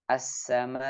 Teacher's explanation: Jadi diangkat sedikit, tidak perlu sampai terlalu tinggi. Jadi sedikit diangkat suaranya, kemudian menutupkan dua pita suara sehingga terucap hamzah sukun dengan jelas.